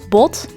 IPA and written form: bɔt (Bot)